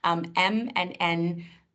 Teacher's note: these are the sounds that you'll actually feel vibration in your nose. So the sound passes through your nose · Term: nasals